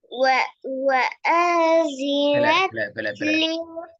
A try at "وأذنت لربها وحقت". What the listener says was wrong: பிழை திருப்பி ஸ்லோ ஆயிடுது ஃபாஸ்டா வரணும்